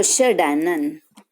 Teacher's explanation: બરાબર, ષટ પ્લસ આનંદ, તો અહીંયા ટ છે એનું શું થઈ જાય છે, આપણે ડ થઈ જાય છે. બરાબર, એટલે અહીંયા ત્રીજો વર્ણ થઈ જાય છે, પહેલા વર્ણને બદલે ત્રીજો, તો ષડાનંદ.